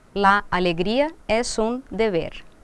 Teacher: A palavra alegria, a sílaba tônica é o gri. Então, o A, sim que começa com A, mas não é a sílaba tônica, então eu não preciso aplicar a regra de eufonia. · A palavra alegria é um substantivo do gênero feminino, singular, mas o que acontece com a sílaba tônica? A palavra alegria, a sílaba tônica é o gri.